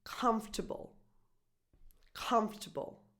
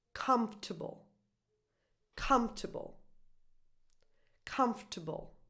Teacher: The stress, the accent, is just on the first syllable.